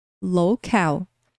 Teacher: com a segunda sílaba tônica ou seja o final da palavra que é pronunciado mais forte